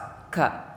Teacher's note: Kaf itu tidak termasuk huruf qalqalah karena kaf itu makhrajnya atau sifatul hurufnya itu suaranya mendesir. Jadi ada nafas yang terbawa ketika menyebutkan huruf ka.